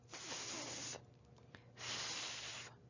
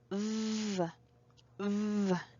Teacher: To produce them, we make a friction with our upper teeth and our lower lips. F, f is unvoiced and v, v is voiced.